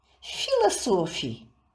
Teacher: делаем ударение на первый слог